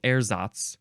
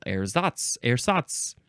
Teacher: still emphasizing the first syllable, ersatz. Or you can emphasize the second syllable